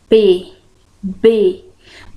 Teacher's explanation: Notem que a boca, né, o lábio se encontra. Então, o ar, a passagem de ar, ela é interrompida pelos lábios.